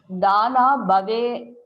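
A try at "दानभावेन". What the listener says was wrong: dhana. There is no dhana. You are making a short vowel to a long vowel and long vowel to a short vowel. Dana bhavena. You understand the mistake?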